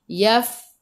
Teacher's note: Matikan dengan huruf nun, hujung lidah menyentuh gusi atas.